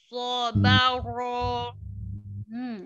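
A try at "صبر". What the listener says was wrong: Ro-nya getar. Sobaro. Sobaro. Ro. Ro. Tapi kita terlalu tebal ya, Mi, ro-nya. Ro. Ro. Ro.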